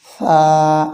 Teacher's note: উচ্চারণ করার সময় এক আলিফ পরিমাণ দীর্ঘ হয়